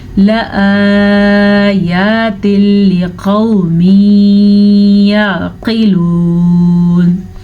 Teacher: تنوین کے بعد لام اور را میں سے لام آیا ہوا ہے تو یہاں پہ ادغام بلا غنہ کا قاعدہ ہوگا